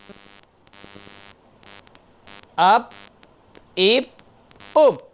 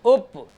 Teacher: دونوں ہونٹ مل جائیں گے، اپ، دونوں ہونٹ بند ہو جائیں گے پیش کی آواز میں